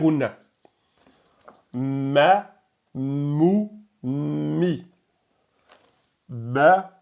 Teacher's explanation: Si vous fermez votre nez, vous verrez que vous la prononcerez bizarrement parce que la lettre mim utilise utilise la c'est ce qu'ils appellent la cavité nasale. La lettre mim, les lèvres sont fermées.